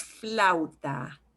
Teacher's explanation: flute together so when you get two vowels together in spanish you will pronounce each vowel and they will kind of get slid together as much as possible as long as you don't see an accent mark there so